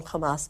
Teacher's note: we're going to do it with a guttural KH sound